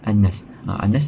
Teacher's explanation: Annas ni berlaku apabila huruf mad iaitu alif bertemu dengan huruf hidup iaitu sin yang dimatikan kerana wakaf berhenti yang di akhir ayat. So annas ni kita baca boleh dibaca dengan dua ataupun empat ataupun enam harakat